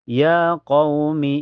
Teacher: ada waw sukun sebelumnya harokat fathah di qaf dibaca dilunakan saja lembut. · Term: harfulin